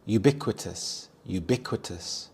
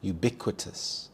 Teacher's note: The stress is on the second syllable bic